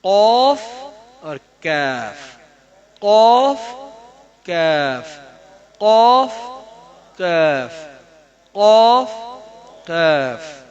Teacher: قوف میں قوف موٹا ہے، نقطوں والا موٹا ہے، اور کاف جو ہے باریک ہے۔